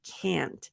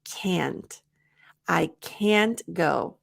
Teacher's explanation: can't is never reduced for the American pronunciation we use the nasal a